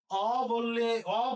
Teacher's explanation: আর যদি আমি অ বলি তাহলে মুখ বড় হয়ে যায়, এই উচ্চারণকে বলা হবে বিবৃত উচ্চারণ